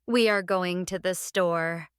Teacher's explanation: Stress going and store.